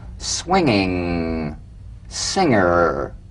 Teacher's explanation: the medial ng, the ng in the middle of the word with no drum beat